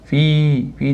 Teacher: Fi da ham madd tabiiy bor, ozgina cho'zamiz.